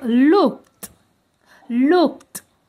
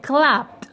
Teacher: Donc pour les consonnes non voisées, à la fin, le son ED a le son T.